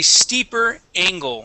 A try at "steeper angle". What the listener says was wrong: give me an E angle. Sound. You're saying stipper. It is steeper.